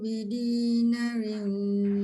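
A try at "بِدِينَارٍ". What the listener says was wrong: Bidinaril. Na 2 harakat. Bidinaril.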